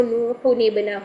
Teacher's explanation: ٹھیک، تو ہمارے پاس اگر یہ قاعدہ بن جائے کہ تنوین کے بعد حمزہ وصلی ہے، تنوین کے بعد حمزہ وصلی ہے اور اس کے بعد حرف ساکن یا مشدد ہے، تو تنوین کی جو حرکت ہے وہ سنگل حرکت رہ جاتی ہے اور اس کا جو نون تھا وہ نون کسرہ کے ساتھ بن کر اگلے حرف کے ساتھ جوائنٹ ہو جاتا ہے، مل جاتا ہے. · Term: نون قطنی